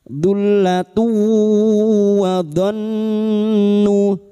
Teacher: masuk pada huruf wau dan mendengung selama tiga harakat · nun yang bertasdid gunna musyadah kita dengungkan selama tiga harakat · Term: idag bununah